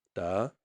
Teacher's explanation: And so a 3 to 5 is a second tone